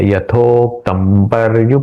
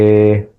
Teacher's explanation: म है। इसलिए म यहां पे इस अ अनुस्वार का उच्चारण मैंने म के जैसे किया।